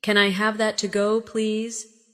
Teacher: When you say to go, your voice should rise slightly.